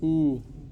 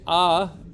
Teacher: the tip of the tongue does not move but what moves is the back of the tongue whether it is when you say o it is touching the